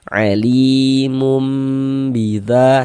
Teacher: Sehingganya li dibaca panjang. Madu tabi'i panjangnya 2 harokat.